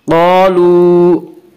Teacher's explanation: قالوا الف مدہ، الف ہمیشہ مدہ ہوتا ہے اور الف سے پہلے زبر ہوتا ہے، الف مدہ کو ایک الف کے برابر کھینچ کر پڑھیں گے۔